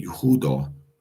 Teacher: But most people say Yehudah, putting the syllable on putting the emphasis on the second to the last syllable.